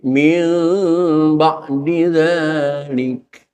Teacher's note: Cuman kadang-kadang cara membaca iqlab ini yang masih keliru. Membaca iqlab ini tidak 100% suaranya menekankan kepada suara mim karena menghadapi ba, tetapi ada ikhfa'nya.